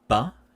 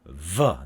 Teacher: with b we see here the lips are closed bilabial stop and we see the teeth are open so it's so you